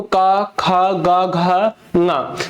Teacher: कंठ से ही आपकी आवाज निकल कर आएगी